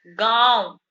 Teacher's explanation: तो गांव बोल रहे हैं, तो हमारे नाक से भी हवा आ रही है और मुंह से भी आ रही है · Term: अनुनासिक